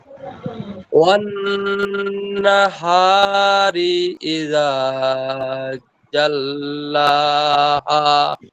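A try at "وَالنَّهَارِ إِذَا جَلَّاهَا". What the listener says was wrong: জি মাশাআল্লাহ ঠিক আছে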